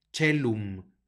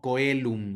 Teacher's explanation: tenemos el diptongo oe que suena como e